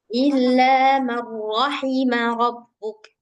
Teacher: di sini nggak ada yang panjang kecuali ilanya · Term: idgham